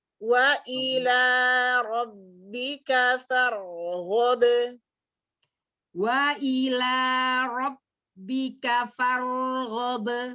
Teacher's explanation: Iya, jadi kaf bukan ka ya. Ingatkan karena kaf itu juga siddah, dia rapat ya karena naik sebentar pangkal lidah itu, tapi kemudian langsung turun. Nah, solusinya untuk siddahnya itu adalah hamas.